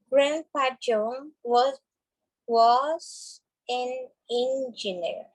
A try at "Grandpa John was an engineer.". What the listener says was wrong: Was an engineer. Was an engineer. Very good, that's right.